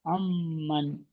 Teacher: নুন সাকিনের মিম এসছে ওই জন্য নুন সাকিনকে এক আলিফ পরিমাণ গুণ করতে হবে >> এক পরিমাণ গুণনা করে পড়তে হবে মিমের উপরে তাজদিদ এসেছে